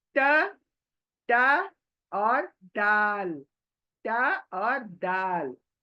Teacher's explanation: तो मखरज पता चला, त का दाल का मखरज सेम है, यानी हमारे बड़े दांतों के पीछे जुबान चौड़ी होकर टच करेगी